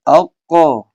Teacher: تو جب آپ دیکھیے، آپ جب اق ق کی آواز نکالیں گے تو وہی قاف کا مخرج ہے جہاں سے قاف ادا ہوتا ہے. تو deepest part of the tongue touch the soft plate, تو وہاں سے مخرج قاف